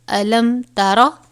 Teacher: میم ساکن کے بعد حرف تا آیا ہے تو یہاں پر اظہار شفوی ہو رہا ہے، کیونکہ میم ساکن کے بعد بتایا گیا تھا کہ اگر با اور میم آئے تو ہم غنہ کریں گے، لیکن اگر میم ساکن کے بعد کوئی دوسرا حرف آ جائے، مطلب حروف تہجی میں سے کوئی بھی حرف آ جائے تو غنہ نہیں کریں گے.